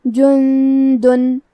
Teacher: کلمت جندن میں نون ساکن ہے، پھر حرف الدال ہے. دال حروف الاخفاء میں سے ہے تو ہم یہ حکم کو غنہ کے ساتھ ادا کریں گے